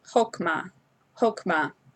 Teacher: But here you have a kametz hey, and this is a mater. You're not pronouncing the hey on the end